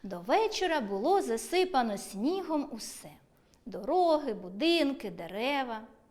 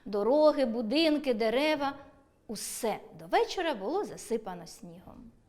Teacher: Узагальнювальне слово усе в першому реченні вимовляємо зі зниженою інтонацією, а в другому – з підвищенням голосу.